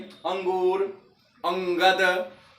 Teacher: अंगूर बोलेंगे तो अंग पर जोर देंगे तो लगता है कि नाक से झंझनाहट आ रही है।